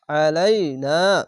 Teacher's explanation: আইনটিকে মোটা করে এবং গলা চিপে পড়বেন